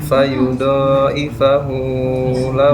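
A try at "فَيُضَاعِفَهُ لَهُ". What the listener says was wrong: Nah, kepanjangan tuh. Nada bendera toh.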